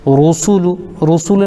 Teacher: رسول، رسول میں دو چیزیں ہمیں دھیان رکھنا ہے، را کو پر پڑھنے کی کوشش کرنا ہے، اور چونکہ پیش ہے تو سب میں ہونٹ گول بھی ہوں گے۔ سین کو صحیح ادا کرنا ہے، سین میں سٹی کی آواز آئے گی